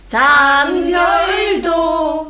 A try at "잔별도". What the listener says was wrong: 잔 미리 올리시면 안 되고요. 그냥 잔 니은 받침을 먼저 붙이세요. 잔별 별에서 만드는 거예요. 잔 따라하지 마시고요. 제가 하면 잔별도 별 잔별도 많고 시작.